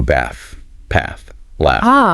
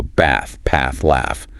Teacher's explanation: In a lot of British English, especially that RP sound, you get a longer, more open sound, like the A in father. · Okay, but in American English? It's usually a shorter, flatter A, more like the A in cat.